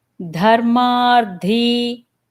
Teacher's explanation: So both D's are Mahapranams, both das.